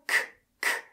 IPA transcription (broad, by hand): k